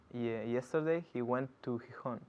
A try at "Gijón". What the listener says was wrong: Qué bien pronuncias Gijón.